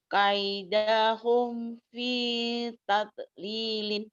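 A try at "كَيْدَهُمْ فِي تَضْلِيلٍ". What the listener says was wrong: Jangan tada, jangan ada e-nya. Jangan ada e-nya ya. Bukan kol-kolah itu.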